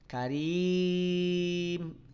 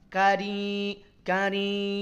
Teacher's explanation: Karim hati-hati panjangkan madnya, jangan sambil dengung, jangan sambil sengau, jangan sambil apalagi samar.